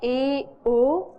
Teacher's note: अन्य स्वरों की अपेक्षा ए ओ यह और ज्यादा कंठ को खोल करके और ज्यादा कंठ का विकास करके बोले जाते हैं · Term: विवृत